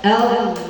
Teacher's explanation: ketika dia berbaris fathah atau dhamma, ketika kita bertemu dengan kalimat Allah, maka dia dibaca tebal.